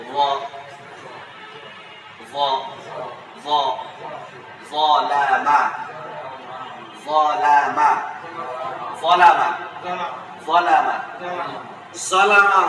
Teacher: মূলত জাল এবং য একই জায়গায়, কিন্তু এটা হচ্ছে আওয়াজটা মোটা।